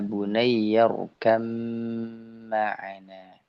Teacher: ketika irkam ma'ana ini adalah dia diidghamkan dan digunnahkan.